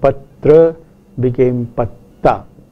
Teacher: the Sanskrit word patra became patta, where the ra following a ta became a ta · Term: total assimilation